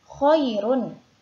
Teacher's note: huruf ro-nya ini juga karena waqaf maka untuk ro-nya ini juga dibaca tarkik atau tipis karena sebelumnya ada huruf ya sukun